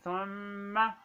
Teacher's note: ثم یہ میم ہے، میم کا پر شد ہے تو اس میم کو ہم ایک الف کے برابر لمبا کر رہے ہیں